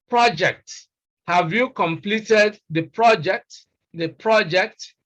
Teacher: If we want to communicate the meaning of project as a noun, as a piece of work undertaken, we place stress on the first syllable